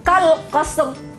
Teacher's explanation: Mesti bunyi tu ra dia tu. Tak boleh kal qas. Mana ra-nya dah hilang. Tak boleh. Dia bukan tarqiq, dia tafkhim ya.